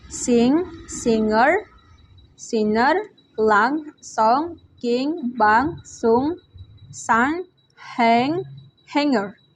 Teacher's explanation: voice velar nasal sound N